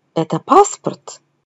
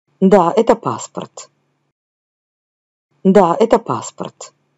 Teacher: affirmation, l'intonation ne monte jamais.